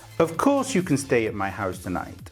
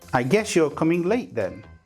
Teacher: The sound that arrives when we assimilate the s with the y sound is sh.